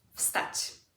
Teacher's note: Again, the W has now become an F sound.